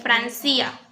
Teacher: en lugar de tener el acento en Fran, el acento está en la I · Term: diástole